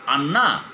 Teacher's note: রটা লুপ্ত হয়ে ওই পরের যে ব্যঞ্জনটা আছে ন, তা দ্বিত্ব হয়ে গেছে